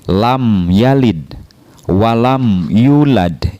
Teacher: Huruf ya ya. Sedangkan huruf ya termasuk ke dalam huruf izhar syafawi, maka dibacanya mimnya itu adalah jelas